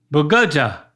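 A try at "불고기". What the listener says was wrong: The sound you're making for the first G, use that again for the second G and you'll have it.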